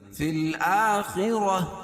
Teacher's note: گول تا کو وقف کی حالت میں ہائے ساکنہ سے بدل دیں گے